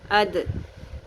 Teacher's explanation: دال کا مخرج یہ ہوتا ہے کہ زبان کی نوک جو ہوتی ہے, ٹپ ہوتی ہے, وہ اس اوپر والے سامنے کے 2 دانتوں کی جڑوں سے ٹکراتی ہے.